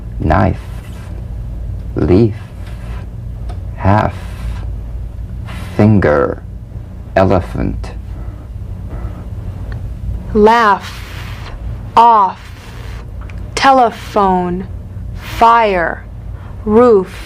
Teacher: the F is a cognate to the V the unvoiced fricative labiodental upper teeth to lower lip just like the V now feel the V then turn off the voice and continue